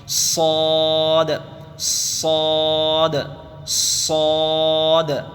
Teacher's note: یہ ہے صاد صاد، اس کو منہ بھر کے پڑھنا چاہیے، حروف مستعلیہ میں سے کہتے ہیں اسے، صاد، منہ بھر کے منہ کو گول کر دیں گے اور زبان کو تھوڑا سا اندر موٹا کر لیں گے اور منہ کو گول کر کر آواز نکالیں گے تو انشاءاللہ تعالی آواز نکل جائے گی صاد کی، صاد صاد صاد.